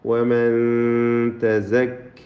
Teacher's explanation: സാക്കിന നൂൻ ഇഖ്ഫാ ചെയ്ത് മറച്ച് മണിച്ചോതുക